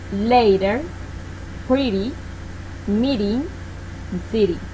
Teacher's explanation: when the T is located between two vowel sounds, it will be an R. This is called flat T. · This is called flat T. That is, if there is a vowel before and one after the T, it will sound like a Spanish R